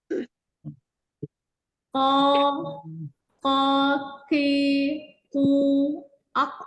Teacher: Pangkal lidah bagian atas bertemu langit-langit lunak ya. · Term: makhraj qaf